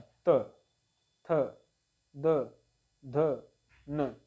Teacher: और त वर्ग जो होता है, त वर्ग में देखेंगे इसको हम बोलते हैं दंत व्यंजन। जब इन सभी को बोलेंगे तो हमारा जो जिह्वा होगा, जीभ, तो जिह्वा हमारा दांत से टच होता है